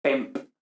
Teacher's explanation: Entonces, de pempo, lógicamente le quitamos la desinencia y nos queda pemp, terminado en P. Entonces, P es una oclusiva labial